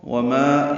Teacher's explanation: وما الف مدہ دو حرکات لمبا ہے